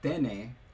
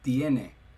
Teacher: a short e, when it was stressed, uh in Latin, became ye in Spanish. So, uh instead of um instead of like I guess tene, uh which is what one might expect, it's tiene. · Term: breaking